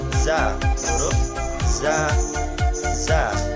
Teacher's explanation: ujung lidah berada pada halaman dua gigi seri bawah sehingga suara za keluar di antara dua gigi seri atas dan bawah. Nafas sifatnya nafas ditahan atau jahar, lunak, dan suara tidak tertahan atau rohwa. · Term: safir